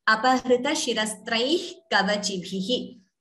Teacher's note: So the Visarga is pronounced only half as Apahrita Shirastraih Kavachibhihi. So the Visarga is not chanted completely. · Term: Jihva Muliya